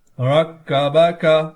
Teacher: اس کاف میں ہم نے جماؤ نہیں کرنا کیونکہ یہ قلقلہ میں موجود نہیں ہوتا